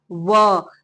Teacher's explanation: जब आप व का उच्चार करेंगे तो दांत और ओठ दोनों का यूज होगा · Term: दंतोष्ठ